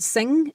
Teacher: the occlusion there comes from your tongue being lifted and touching your soft palate. That's where the occlusion happens in an NG.